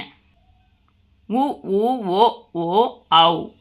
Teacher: உ ஊ ஓ ஓ ஔ ஆகிய ஐந்தும் வாய் திறக்கும் முயற்சியுடன் இதழ்களை குவிப்பதால் பிறக்கின்றன